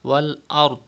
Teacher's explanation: Pronounce dod with thicker voice.